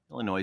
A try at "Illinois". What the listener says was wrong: That S is supposed to be silent. Illinois. Like Des Moines.